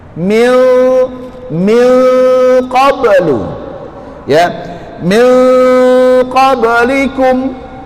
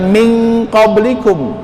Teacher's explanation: Engnya itu jangan terlalu dijelaskan tapi agak disamarkan lagi. Nah, masukin ke hidung.